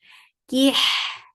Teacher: Kaf is light for for kasrah give i sound then attach it to Ha. Ha will get sifa of raw and Ha should be from middle part of your throat.